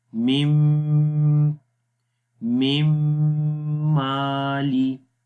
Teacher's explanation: دونوں ہونٹوں کو آپس میں ملائیں گے، یہ اسٹرانگ ملانا ہے، سخت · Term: ادغام بالغنہ